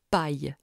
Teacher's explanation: à proximité du palais dur apparaît le ye du français paille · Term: palatales